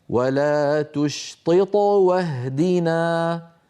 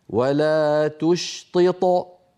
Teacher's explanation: المثال الثاني: ولا تشطط واهدنا، فكما نطقتها الآن قلقلتها صغرى، ولو وقفت وقلت ولا تشطط فصارت قلقلتها عندئذ كبرى